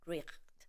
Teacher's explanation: In Old English, this word probably sounded something like richt. Note how the letter H is not silent and the vowel I is not long